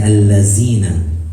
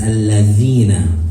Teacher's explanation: The dhal is not a buzzing letter. It is from the tongue, it is from the tip of the tongue. · But it's just with the dhal, the tongue is more inserted inside of the mouth. So it's from the tip of the tongue, the upper two front teeth, pushing out the sound, not bouncing it and not buzzing